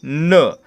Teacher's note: याचा उच्चार करताना देखील आपली जीभ आहे ती आपल्या दातांना स्पर्श करते वरच्या दातांना स्पर्श करते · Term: दंत्यवर्ण